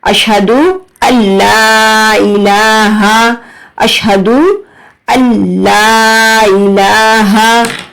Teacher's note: یہاں پر نون ساکن اور تنوین کے 4 قاعدوں میں سے ایک قاعدہ ادغام وداؤٹ گننا اپلائی ہو رہا ہے